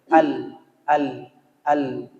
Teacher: lam mati itu lam bersifat tawasud posisinya di tengah tidak menekan dan tidak terlalu berlebihan mengalir